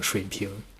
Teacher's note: 中文发音的时候，很有可能会误以为水平的正确发音应该是水平这样，但是实际上这个3声上来的时候就会跟就是后面的那个2声连接到一起去，就会融为一体了，如果可以这么说的话。所以说呢，这个水平就会变成水平，所以那个 前面的那个3声你只需要发一半就行了，然后后面的那个2声可以带动它上去 ，大概是这么一个意思。所以你可以多练习，多听一听母语者怎么发3声加2声，然后去大量的模仿。我相信你模仿多了之后，你就大概自己有感觉了。反正我就是这么学会的。第3个错误，我的中文主要是跟北方人学的，其实，所以不得不说呀，这个错误会让我有点烦，那就是乱用儿化音。那么乱用儿化